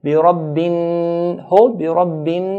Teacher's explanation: So whenever noon or mim is pronounced, there's a nasalization, a sound from the nasal passage automatically comes with these 2 letters. Now noon here has a shadda. So we hold the noon. بِرَبِّن, hold, بِرَبِّن, then let go.